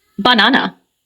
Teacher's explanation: in the word banana, the stress is on the second syllable, banana. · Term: word stress